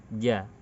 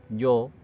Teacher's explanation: Ketika menyebut huruf jim haruslah suaranya ke bawah, tidak menuju ke atas. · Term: istifal